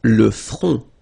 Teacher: Final T not pronounced. Le front. Okay, remember this nasal on, on.